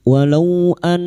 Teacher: nun yang bertasdid ghunna musyadadah. Kita dengungkan selama tiga harakat.